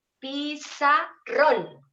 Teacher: fíjense que yo hago siempre una fuerza más en la última sílaba entonces esa última sílaba es la tónica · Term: sílaba tónica